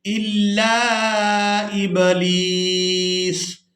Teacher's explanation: وقف کی صورت میں سین کو ساکن کر دیں گے، لام کو یا ساکن اور سین ساکن کے ساتھ ملا کر ادا کریں گے